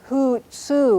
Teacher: And let's see, the word for bird is hoot-su. It has 2 long U's in it. You draw them both out. This is spelled with 4 U's, this word, hoot-su, bird.